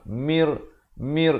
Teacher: Mir bukan min lagi dah. Mir masuk tanpa dengung. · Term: idgham bila gunnah